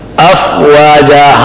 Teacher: افواجا حمزہ سخت ہے اور فا اوپر کے دو دانت نیچے ہونٹ کے درمیان میں نرمی سے لگ جائے